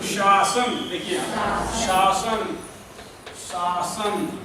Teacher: पहले होगा उसमें तालव्य श, उसके बाद दंत स है ना, शासन